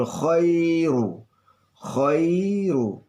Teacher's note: Ya sukun didahului oleh fathah, ini namanya mad layin, ya, panjang tapi halus, ya, lunak